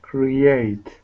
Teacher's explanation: We put a small Y in there.